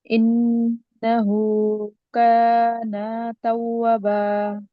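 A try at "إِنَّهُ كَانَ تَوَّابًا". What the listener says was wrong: তাওয়াবা ওয়াও টান আছে হ্যাঁ মাশাআল্লাহ আপুর হচ্ছে জিম উচ্চারণটা ঠিক করবেন ফার্স্টে আর হচ্ছে ভুল হচ্ছে দি এখানে একটু টান হবে হ্যাঁ এই দুইটা জিনিসে আপনার ভুল হয়েছে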